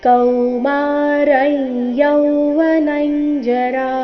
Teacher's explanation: ಅನುಸ್ವಾರ ಇದರ ಉಚ್ಚಾರಣೆ ನಾಸಿಕ ಯ ರೀತಿ ಕಾರಣ ಮುಂದಿನ ಶಬ್ದ ಯವ್ವನ ಅವರ್ಗೀಯ ವ್ಯಂಜನ ಯ ದೊಂದಿಗೆ ಪ್ರಾರಂಭವಾದ ಕಾರಣ ಕೌಮಾರೈ